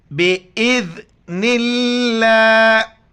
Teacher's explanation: لفظ اللہ سے پہلے نون پر زیر لفظ اللہ کو باریک پڑھیں گے اور ذال کے وقت زبان باہر نکالنا ہے